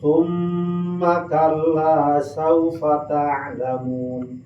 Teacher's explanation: Aya mim ditasdidan macana wajib gunnah eta naon? Dengung kana irung.